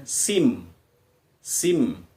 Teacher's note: karena di depannya ada mim bertasdid, maka tidak sin, tapi kita masuk ke bunyi mim